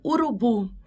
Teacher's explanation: Como no exemplo urubu, a mais forte é a última